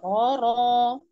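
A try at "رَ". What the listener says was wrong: Masih datar. Oke, terus dilatih.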